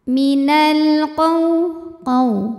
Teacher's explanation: Cara bacanya lam sukun dibaca dengan jelas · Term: alif lam qamariyah